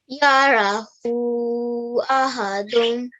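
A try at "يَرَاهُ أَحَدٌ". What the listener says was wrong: Okay, the ha just a tiny bit longer, probably for one more count, okay? Yarahu ahadun.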